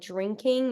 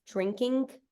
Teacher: they can't do ing, so it's not like drinking, it's drinking. It like finishes with a K.